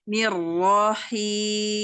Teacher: Langsung rapatkan bibirnya, tidak ditekan.